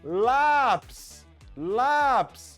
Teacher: A sílaba forte é a penúltima, né?